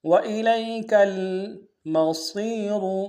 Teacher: صاد کو موٹا ادا کرتے ہوئے یا کے سامنے لانا ہے، یا مدہ ایک اندار میں کھینچیں گے، اور را کو موٹا ادا کریں گے.